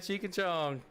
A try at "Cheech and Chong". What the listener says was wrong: Cheech and chong. You said cheek.